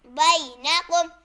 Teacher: با یا زبر بی نون زبر نا بینا کاف میم پیش قم بینکم. یہاں یا ساکن سے پہلے زبر آ رہے تو یا لین ہوگا. اسے بغیر کھینچے پڑھیں گے